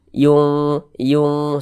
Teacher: cara membacanya itu kita samarkan kemudian kita dengungkan bunyi nunnya tuh kita samarkan kita baca samar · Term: ikhfa Hakiki